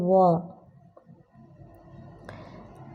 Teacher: ऐसी ध्वनि जो दंत और ओष्ठ दोनों से बोली जाती है तो वह आपकी ध्वनि है व। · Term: दंतोष्ठ ध्वनि